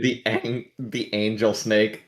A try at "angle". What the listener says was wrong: It's angle, not angel. Angle.